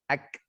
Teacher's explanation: Nah, itu kafnya kalau dalam bahasa Arab atau dalam ilmu tajwid ada istilahnya hams. Jadi K ketika mati ada kayak hembusan nafas yang ikut keluar.